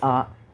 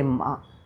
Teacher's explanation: ఈ కంఠనాళాలు కనుక ఉన్నట్టయితే అవి ఉండి నోరు తెరిస్తే వచ్చే ధ్వని ఆ, నోరు మూస్తే వచ్చే ధ్వని మా.